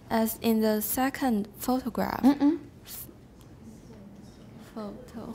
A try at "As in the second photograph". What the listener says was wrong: We don't stress photograph because we've already mentioned